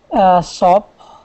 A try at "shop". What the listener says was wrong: So I'm kind of hearing sop. I just want to make sure that's a sh sound. Shop.